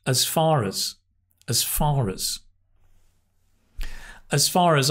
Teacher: It's not as it's /əz/, /əz/ Because it's unstressed